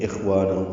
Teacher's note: خوا ساکن پہ ہمس ہے